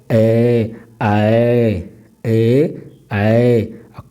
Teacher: इसमें कंठ और ताल दोनों का प्रयोग होता है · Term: कंठ ताल